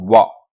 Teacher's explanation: आपका दंत और आपका ओष्ठ दोनों। एक दोनों का इस्तेमाल होता है इसके उच्चारण के लिए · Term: दंतोष्ठ